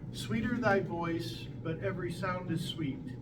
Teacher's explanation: So that particular poem has 10 syllables that alternate, unstressed, stressed, which, by the way, that's the most common rhythm in English poetry, this sort of unstressed, stressed rhythm.